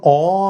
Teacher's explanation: যখন অ আমি বলছি শ্বাসবায়ুটা মুক্তভাবে কিন্তু বাতাসটা বেরিয়ে যাচ্ছে তাই এটা স্বরধ্বনি।